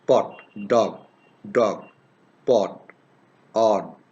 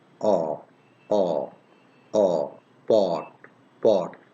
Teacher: So, remember this one, that this is rounded, our lips are in rounded position and in half open position